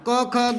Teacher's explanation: जो व्यंजन मूलतः कंठ की सहायता से उच्चारित होते हैं वो कंठे कहलाते हैं